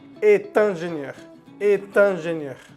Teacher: Después del verbo être, sobre todo conjugado en la tercera persona, est, él es, ella es, eso es. Después de ese est siempre se hace una conexión a la siguiente palabra, una conexión oral.